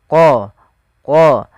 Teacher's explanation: makhraj daripada huruf q yaitu pangkal lidah kita menempel dengan langit-langit atas